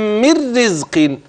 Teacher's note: ادي النون واتى بعدها الراء هتدغم ومفيش معاك غنه